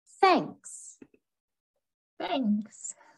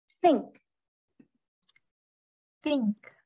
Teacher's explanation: The voiceless th sound with no vibration in the vocal cords.